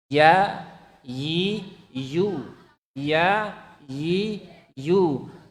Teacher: ya yang tengah lidahnya naik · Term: huruf ya